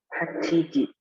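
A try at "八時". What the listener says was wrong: Hachiji benar ya.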